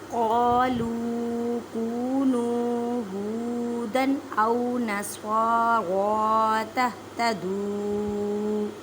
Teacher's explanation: قاف کو ادا کرتے وقت خیال رکھیں کہ کاف کی آواز نہ آئے کیونکہ یہ حروف مستعلیہ یعنی موٹے حروف میں سے ہے